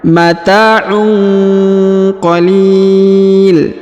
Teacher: Kemudian huruf tanwin bertemu dengan huruf qaf, maka didengungkan dan disamarkan ya.